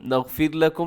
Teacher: اس میں را باریک ہے کیونکہ را ساکن ہے، لیکن اس سے پہلے حرف کے نیچے زیر آ گیا تو ہم نے را کو بھی باریک پڑھیں گے۔